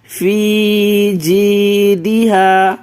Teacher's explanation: فی جیدہا کھینچ کے پڑھنا ہے کیونکہ یہ یا مدہ ہے